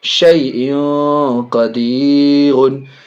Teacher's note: حمزہ میں دو زر تنوین، اس کے بعد قاف بڑی قاف حرف اخفا میں سے ناک میں آواز یہاں بھی جائے گی،